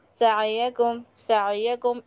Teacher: आइन पर इतना जोर मत दीजिए कि वो झटके में बदल जाए। झटका नहीं होना चाहिए। · ऐसे पढ़ना है कि आइन भी अदा हो जाए और झटका भी ना हो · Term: आइन की अदायगी